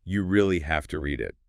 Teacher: It notes that the speaker emphasizes have to. Like you really have to read it, showing strong recommendation.